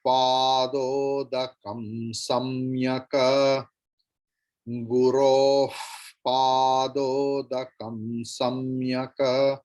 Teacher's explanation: So after Visarga, if there is Pa, Visarga's pronunciation will be as Pa.